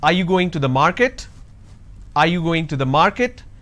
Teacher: This is going up because the last word denotes like it's a question. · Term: rising tone